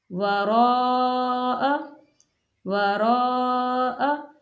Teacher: اوتوا الکتاب، کتاب اللہ وراء، یہاں دیکھیں الف مدہ ہے، الف مدہ کے اوپر مد ہے تو یہاں چار الف کے برابر کھینچ کے پڑھیں گے